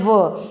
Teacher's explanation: दंतोष्ठ है, यानी ऊपर के दांत और निचला होठ। दंतोष्ठ है, दंत प्लस ओष्ठ से बना है, ऊपर के दांत और निचला होठ आपका क्या है, व।